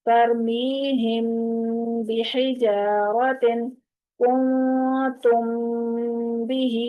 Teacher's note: اس میں میم کی آواز کو ہم چھپا دیتے ہیں، میم کو ظاہر نہیں کرتے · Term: اخفاء شفوی